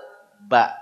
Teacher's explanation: bahasa Indonesi dan Dir rasakeunnya gampang nama Ya silakan rasakan ba betul enggak dua bibir terlibat